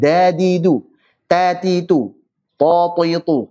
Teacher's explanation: Ujung lidah ketemu pangkal gigi seri atas. Kena gusi-gusi sedikit.